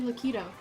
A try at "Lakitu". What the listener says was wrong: No. It ends with a U! K-I-T-U.